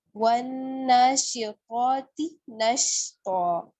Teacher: اس کا بہت خیال رکھنا ہے کہ قا پہلے موٹا ہے، اس کے بعد تا باریک ہے